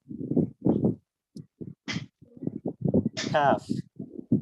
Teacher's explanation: জিওভার গোড়া যেখান থেকে কফ উচ্চারিত হচ্ছে এই দুইটার মাঝখানে অর্থাৎ জিওভার গোড়া থেকে একটু সামনে যে অংশটা সেটা উপরের তালুর সাথে লেগে উচ্চারিত হবে কাফ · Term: পাতলা কাফ